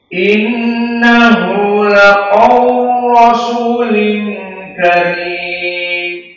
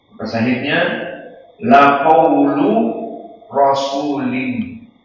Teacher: Maka di sini idgham al kabir, lam yang dhammah dihilangkan, dimasukkan kepada ra, jadi laqawl, laqawl, tidak ada lam lagi.